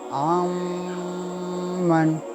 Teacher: سو ہم ڈائریکٹ میم کو آئین سے ملائیں گے اور نون ساکن کی آواز کو میم مشدد میں مدغم کر دیں گے، یعنی مرج کر دیں گے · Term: ادغام